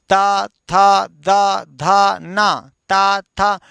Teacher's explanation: तो देखिए, जीभ जो है दांतों को टच करती है ना। जीभ देखिए पीछे से दांतों को छू रही, ता था, देख लीजिए, बोल के देखिए, ता था दा धा ना, ता था। · ताथा दाधा ना बोलने के लिए जीभ को पीछे से दांतों को ठेलना पड़ता है, दांतों को छूना पड़ता है। ताथा दाधा ना बोलने को जीभ दांतों को छूती है, टच करती है, पीछे से ठेलती है, स्पर्श करती है। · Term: दंत वर्ण